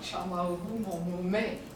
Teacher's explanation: It's a definite fall at the end of the sentence. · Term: final lowering